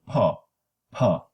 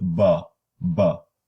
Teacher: the sounds will have the same manner in in production plosion and the only difference is voicing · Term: cognates